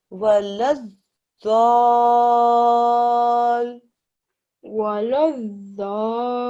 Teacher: You've paid attention to the fact that you don't read these blank letters, but that you do join the lam and the zad, that you press down on this zad, that you stretch the sound out for 6 seconds or up to, and then you join it with the lam at the end